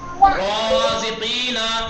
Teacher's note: रा पे फतह है, उसके बाद अलिफ मद्दी है ना, तो रे को खींच के, तो रे का हुक्म है तफखीम, तो अलिफ में भी तफखीम होगी।